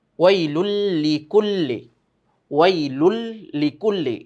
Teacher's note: এখানে তানভিনের পরে লাম এসেছে ইদগামে বেলা গুন্নাহ, যেটা আমরা গুন্নাহ ছাড়া ইদগাম মিলিয়ে পড়তে হয় শব্দটাকে। তো মিলাতে গেলে কিন্তু এই যে তানভিন, তানভীরের কিন্তু এক শব্দ বা একটা পেশ আসবে।